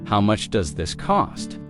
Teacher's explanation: In natural conversation, does this often sounds like, do this?